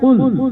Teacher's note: اس قاف کو نقطوں والا جو قاف ہے، ہم اس کو موٹا کرتے ہیں